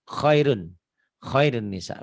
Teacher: Bunyi nun matinya jadi hilang masuk ke idgham ya.